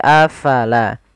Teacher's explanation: pada lafal afala fa harus alirkan nafasnya la jangan dibaca afala tapi afala.